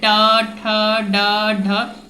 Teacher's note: जीभ देखिए कहाँ पे टच कर रहा है, आपके ऊपरी दांत का थोड़ा सा ऊपर का हिस्सा में टच कर रहा है, तो उसको हम लोग मूर्धा कहते हैं। ठीक है, ये ट वर्ग में आता है।